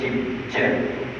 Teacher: Jim memang rapat habis, memang melekat, memang terkantuk. Dan disebabkan itu, angin bila sampai dekat makhraj, angin tak boleh keluar, dan angin akan stay ke situ sampailah makhraj boleh terbuka. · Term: syiddah